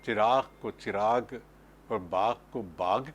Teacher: غین کی گاڑی آواز کو گاف کی آواز میں بدل دیا گیا